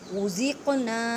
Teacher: لو کو ایک الف کی مقدار میں کھینچ کر پڑھیں، لام کو ھذا الذی غزقنا، قاف پہ کلکلہ کریں کیونکہ قاف ساکن ہے اور حروف کلکلہ میں سے ہے، مینس کے ہلا کے پڑھیں۔